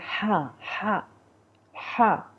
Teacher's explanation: ہا جو ہے وہ حلق کے درمیان سے